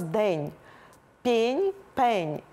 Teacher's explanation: оце ствердіння приголосних перед е - це така українська риса